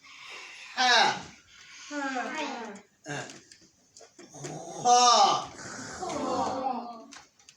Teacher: Ha is taking hot air from your throat, from the middle of the throat.